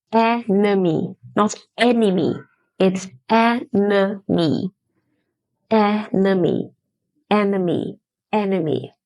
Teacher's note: Here, the schwa sound is replacing the second E.